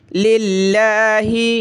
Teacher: لفظ اللہ سے پہلے لام پہ زیر ہے، پتلا کریں گے